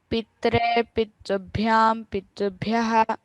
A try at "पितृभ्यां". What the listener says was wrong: पितृभ्यां पितृभ्यः इति नास्ति पितृभ्यां तृ केवलं तृ तत्र stress shouldn't be given.